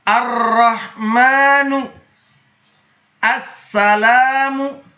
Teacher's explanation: huruf kelamnya tidak dibaca hurufnya dihilangkan dalam membacanya jadi seolah-olah tidak ada huruf lam setelah Alif Alang sunke huruf